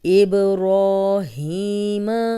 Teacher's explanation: با پہ کلکلا ہے، ہلا کے پڑھیں گے، را کو لمبا کریں گے، 2 حرکات۔